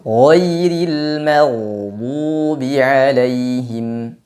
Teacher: huruf ghain tidak disifati dengan qalqalah, maka jangan dibaca dengan memantul.